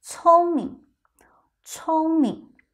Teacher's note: Here notice the tone of 明 is a second tone, but in your real life, most of the time, we pronounce it with a neutral tone.